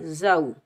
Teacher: یہ واو لین ہے، اس کو ہم نرمی اور جلدی سے ادا کریں گے